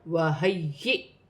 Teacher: پھر دوسری مرتبہ یا کو حمزہ کے ساتھ ملا کر پڑھا جائے گا اور جھٹکے کے ساتھ. حمزہ ساکن ہے، جھٹکے کے ساتھ پڑھا جائے گا